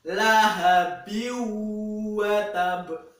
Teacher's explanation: bertemu dengan huruf wau itu dibaca dengung. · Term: idgham bighunah